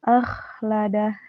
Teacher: jadi huruf kho ini tidak tertahan, sifatnya mengalir, rokhwah dan juga hamas gitu. Tidak ditahan huruf kho-nya.